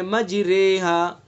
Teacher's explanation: را ممالہ، یعنی وہ را جس میں امالہ کیا گیا ہو باریک ہوگی۔ مجریہا، مجریہا نہیں پڑھیں گے اس کو، بلکہ باریک پڑھیں گے، مجریہا۔